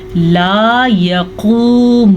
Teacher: दोनों वाव मद्दा हैं, दोनों को खींच के पढ़ेंगे, काफ को मोटा पढ़ेंगे। हाँ, नून के ऊपर ज़बर है तो नून को हम किसी भी सूरत में खींच के नहीं पढ़ेंगे, ठीक है। अगर इसको थोड़ा सा भी हमने लंबा किया तो ये अलिफ मद्दा या खड़ी ज़बर की तरह हो जाएगी, तो ये गलत हो जाएगा।